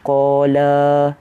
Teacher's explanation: Kita baca qala, kita baca la tu 2 harakat.